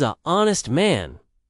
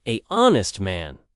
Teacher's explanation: The word honest starts with a vowel sound because the H is silent. So we say an honest man, not a honest man.